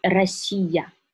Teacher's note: R, for some people, is difficult to pronounce because it's not exactly English R. It's R, Russian R is very rolling. So you need to put the tip of the tongue up to the palate and vibrate it like that.